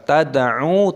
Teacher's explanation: Fala tad'u, lam alif panjangkan lamnya dua ketukan. Tad'u, talinya qalqalah, sukun dipantulkan tad'u, ainnya dibaca panjang dua ketukan. Ma'allahi, lafaz Allah dipanjangkan dua ketukan.